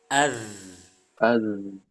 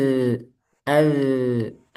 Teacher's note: Salah satu sifat dari zal itu rokhawah. Jadi suaranya mengalir. Rokhawah itu suaranya mengalir.